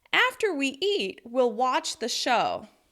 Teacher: by stressing after, eat, watch, and show, I've signaled to you the most important words of the sentence and created that natural rhythm in English.